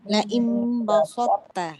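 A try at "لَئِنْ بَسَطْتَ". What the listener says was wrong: Jangan bo, jangan so. Hati-hati. Ba nipis, sin nipis. Basal. Bukan basot. Kita selesaikan ba dengan sin. Basa. Ba nipis, sin nipis. Basa. Basalta.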